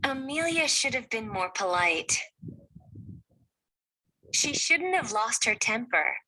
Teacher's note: notice the reduction of have